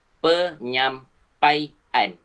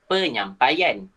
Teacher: kalau diftong disambut oleh imbuhan akhiran an, diftong tu hilang. Diftong tu dah dihilangkan daripada transkripsi fonetik.